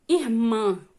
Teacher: oxítona né neste caso e nós temos aqui né a oxítona a sílaba tônica né que é a última sílaba